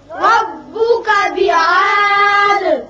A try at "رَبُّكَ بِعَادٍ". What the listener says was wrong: را پر کریں گے اور عین کا مخرج نکالیں گے. بعاد الف نہیں نکالنا. یہاں وقت کی صورت میں دال ساکن ہو جائے گا اور اس کی صفت قلقلہ ادا کریں گے.